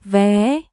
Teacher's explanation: Rising tone, upward, like a gate that opens.